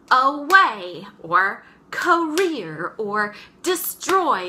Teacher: first syllable being unstressed, the second one being stressed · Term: unstressed, stressed